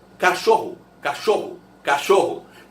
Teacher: esse O final tem som de U. Porque na verdade você fala cachorro, cachorro, cachorro.